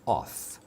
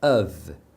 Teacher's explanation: The word OF is pronounced of, with a V sound at the end